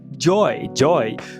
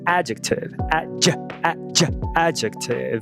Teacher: O nome técnico desse fonema é consoante africada pós-alveolar vozeada. Então esse é a versão vozeada.